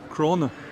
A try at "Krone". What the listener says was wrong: It's an E, not an A.